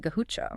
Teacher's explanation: They apparently struggled with the Spanish R sound. So, they rendered it as a strong aspirate H, effectively turning Garucho into something like Gahucha.